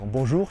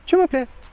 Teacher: À chaque fois, tu remontes dans les aigus à la fin des mots. Par exemple, quand tu vas dire bonjour, tu ne vas pas dire juste bonjour, tu vas dire bonjour. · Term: la tonalité montante